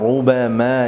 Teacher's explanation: রর উপর পেশ এসেছে, অতএব রকে মোটা করে পড়ব